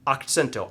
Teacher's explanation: I sent the accent to the second syllable. I sent it. So you send it into a word, you sort of put a little rocket boost into a word there, and that's the one that gets the extra oomph, okay?